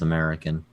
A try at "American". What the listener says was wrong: American. No, there's no first syllable. It's just American. Starts with the M.